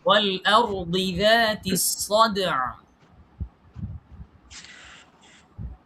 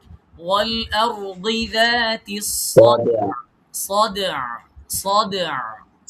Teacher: আরেকটু আইনটা আরেকটু ভিতরে ঢুকাইতে হবে।